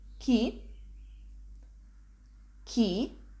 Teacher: with the slightly upward intonation · we pronounce this again with a slightly upward intonation, which marks it is a question